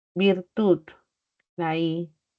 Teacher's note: La I es alta y es anterior.